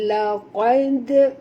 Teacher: huruf qaf tebal, dal ni huruf yang lemah. Jangan tebalkan pada dal.